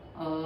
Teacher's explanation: ओम मध्ये तीन स्वर आहेत अ उ आणि म अ दोन सेकंद उ तीन सेकंद म पाच सेकंद असं 10 सेकंदामध्ये एक ओम होईल त्यापेक्षा जास्त वेळ लागला तरी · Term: ओमचा उच्चारण